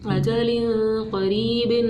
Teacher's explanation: را یا زیر ری، قری، با دو زیر بن، اجل قریب، را کو زیر تھی نا اس لیے اس کو باریک پڑھنا ہے، موٹا نہیں پڑھنا